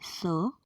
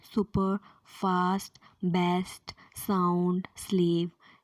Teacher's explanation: In the production of sound s, the soft palate is raised to shut off the nasal passage and obstruction is caused by the blades of tongue making contact with alveolar ridge। तो आप फिर से diagram में देखिए कि साउंड स को बोलते समय tip and blade of tongue touch कर रहे हैं alveolar ridge को।